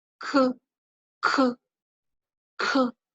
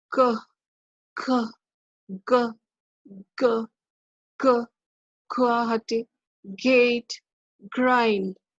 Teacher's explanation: the tongue it contacts the soft palate or velum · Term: velar plosives